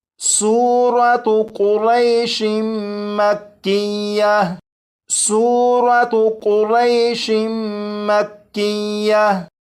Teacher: یہاں پر سورت کا نام لکھا ہے، اور یہاں پر دیکھیں شین کے نیچے 2 زیر ہیں، یعنی تنوین ہے، اور تنوین کے بعد میم ہے۔ تو تنوین کو میم میں ادغام کریں گے اور میم مشدد پر غنہ کر کے پڑھیں گے۔